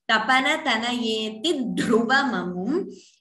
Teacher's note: note the dvitvam, doubling of dh here.